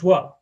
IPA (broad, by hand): dʒw